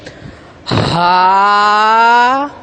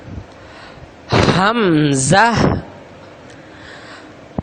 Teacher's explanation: हा को भी अदा करते वक़्त और हमज़ा को भी अदा करते वक़्त सीने की तरफ जो हिस्सा है हलक का, उधर से ये अदा होते हैं